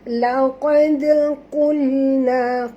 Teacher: huruf qaf tebal, dal lemah. Jangan tebalkan dal, ya. Lantunkan dia kerana qalqalah sughra. Laqad qulna, qul, huruf qaf tebal sama seperti ini, qaf, ya.